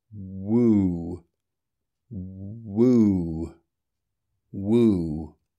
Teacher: the lips are still tighter for the /w/ consonant than for the /uː/ vowel which follows, but the opening out into the vowel is much less noticeable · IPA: /wuː/